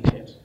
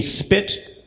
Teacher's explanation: The P in pit is aspirated, there's more air, and the P in spit is less aspirated.